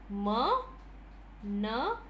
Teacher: like in the in the plosives but it's not sudden explosion it is complete closure and nasal release the air is also through the nose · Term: nasals